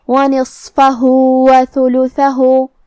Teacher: کلمت نصفہ یہاں صاد ہے، صاد حروف التفخیم میں سے ہے تو ہم یہ حرف کو بھاری آواز میں منہ پھولا کے پڑھیں گے. فا پہ زبر ہے لہذا ہمیں زبر کو ظاہر کرنا ہے. · فا پہ زبر ہے لہذا ہمیں زبر کو ظاہر کرنا ہے. آخری میں ہا پہ الٹا پیش ہے تو یہاں حکم ہے مد صلہ صغرا. ہم اپنی آواز 2 مد کے برابر لمبی کریں گے